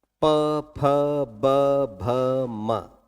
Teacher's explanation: प फ ब भ म जीवा शांत है और बाकी सारे जो है चाहे मसूड़े हैं चाहे दांत है कुछ है वो कुछ कोई हरकत नहीं कर रहे केवल होठों से वायु को नियंत्रित किया जा रहा है · और दंत के बाद में आखिरी जो स्थान आता है उसका नाम है ओष्ठ। प फ ब भ म जीवा शांत है और बाकी सारे जो है चाहे मसूड़े हैं चाहे दांत है कुछ है वो कुछ कोई हरकत नहीं कर रहे